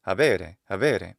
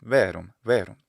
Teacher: he continues to distinguish the letter V from the letter B, but he makes both sound a little bit more like the other. He adds a degree of lenition to the intervocalic B.